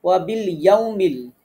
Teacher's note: ওয়াও সাকিন, তার আগে জবর আছে, দ্রুত পড়তে হবে, হরফে লিন। এরপরে আখিরি, হামজাতে আমরা একালিফ টানবো, খি রি, র পাতলা করে পড়বো।